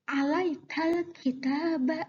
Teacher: kaf adalah salah satu dari huruf komariah, maka suara lamnya dibaca jelas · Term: idhar komariah